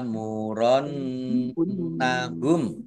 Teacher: alif fathah berdiri mat tabi'i panjang 2 harokat. Nun tasdid bacaan gunnah atau mendengung ditahan 2 harokat.